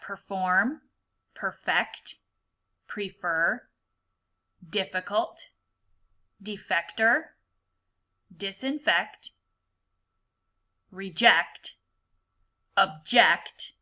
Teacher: you hear how I'm using the schwa sound in the first syllable